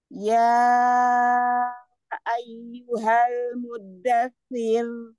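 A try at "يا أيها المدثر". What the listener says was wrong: Ya, samakan tasdidnya, samakan ininya, temponya. Mudasir. Terlalu lebar sentuhan ujung lidahnya ya.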